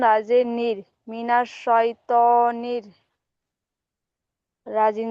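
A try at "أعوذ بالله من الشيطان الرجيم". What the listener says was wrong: এখানে পড়েছেন শিন ইয়া যাবার ছয় পড়েছেন, ছয় হবে না সাই। সদ ইয়া যাবার ছয় হয়, কিন্তু শিন ইয়া যাবার সাই হয়। তাহলে ছয়, শয়তান রাজিম বলবে না, সাই। আউযু বিল্লাহি মিনাশ শাইতানির রাজিম।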